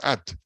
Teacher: At es una sílaba pesada porque termina, aunque tenga vocal corta, termina en T.